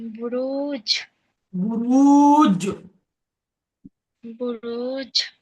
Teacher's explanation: জিমকে কলকলা করে আগের অক্ষরের সাথে মিলিয়ে পড়তে হবে